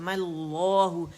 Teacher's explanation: अच्छा, फिर दूसरे तरीके में ये होता है कि यहीं पूरा ये पढ़ लिया जाता है, लेकिन इसमें सांस आवाज़ नहीं तोड़ते, बल्कि फिर हम क्या करते हैं कि मीम के ऊपर ज़बर डाल के और हम इसे मल्लाहु कर देते हैं, हमज़तुल वसल को गिरा देते हैं, इसको नहीं पढ़ते, मल्लाहु पढ़ते हैं, मल्लाहु।